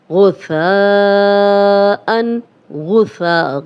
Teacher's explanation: غائن کو موٹا پڑھیں گے، سا نرم ہے، سیٹی کی آواز نہیں آئے گی